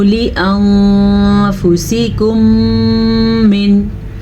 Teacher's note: मीम साकिन के बाद दोबारा मीम आ गया है तो इदगाम शफ़ी का कायदा होगा